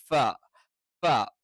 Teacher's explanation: മേലെ മുൻപല്ലിന്റെ അടിഭാഗം താഴെ ചുണ്ടിൽ ചേർത്ത് വെച്ചുകൊണ്ടാണ് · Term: ഫയുടെ ഉച്ചാരണം